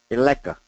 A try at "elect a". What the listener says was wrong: Electa. Keep that T, that duh. Elect a president.